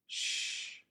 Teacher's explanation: Instead of the thin sound made with the letter S, the lips are more rounded and more air comes over the blade of the tongue to create this sound sh. The tip of the tongue can be in the same position as for the S, either up behind the gum ridge or behind the lower front teeth.